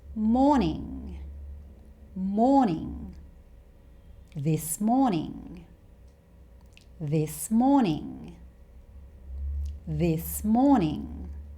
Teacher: Australians don't tend to say the letter R here like the Americans.